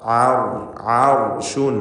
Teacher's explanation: അളീം ഈ പദം പ്രത്യേകം ശ്രദ്ധിക്കുക മഹ്റജിൽ നിന്ന് വ്യക്തമാക്കി ഉച്ചരിക്കണം തൊണ്ടയുടെ മധ്യം റാഇന് തഫ്കീം കൊടുക്കണം കാരണം അതിന് സുക്കൂനും മുൻപിൽ ഫത്ഹുമാണ്